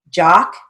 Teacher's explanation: it has the broad a sound the ah sound but it's spelled with an o so we're going to keep